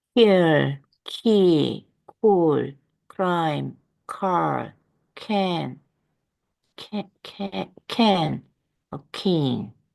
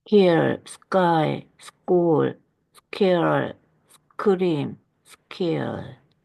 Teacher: 비대기음 K는 S 뒤에 있고 강세가 없을 때